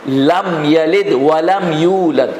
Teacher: آپ نے کبھی کسی کو غنہ کرتے ہوئے نہیں دیکھا ہوگا، حالانکہ میم ساکن ہے. یہاں پر میم اور با آ جائے تو غنہ ہونا چاہیے تھا، لیکن یہاں پر غنہ نہیں ہوا، اس لیے کہ نہ میم ہے نہ با ہے. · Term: اظہار شفوی